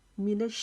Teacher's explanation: شین کی آواز ہمارے پورے منہ میں پھیلے گی اور رکاوٹ سے شین کو ادا کریں گے کیونکہ اس کے اوپر تشدید آ گئی ہے۔